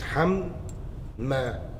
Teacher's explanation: Idgham. The first Mim has literally gone into the second Mim, merged into one. Okay? So it's assimilated.